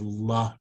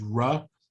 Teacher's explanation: La and ra is all about tongue placement. For la to happen, you have to start with your tongue at the top of your mouth, and with ra, it's flat on the bottom of your mouth.